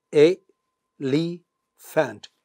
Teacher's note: the first syllable has only one sound, e. The second syllable has two sounds, l and e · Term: three syllables